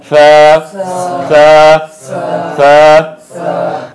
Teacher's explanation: জিব্বার আগা সামনের দুই দাঁতের আগার সঙ্গে লাগাইয়া।